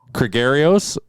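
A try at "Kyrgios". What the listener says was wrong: The G is silent.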